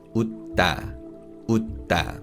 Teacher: what this basically means is that we pronounce the consonant sound a bit longer. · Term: geminate consonant